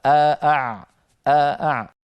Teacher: حرف العين قريب المخرج من الهمزه